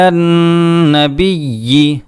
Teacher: نون کے اوپر تشدید ہے، اس میں ہم غنہ کریں گے 1 الف کے برابر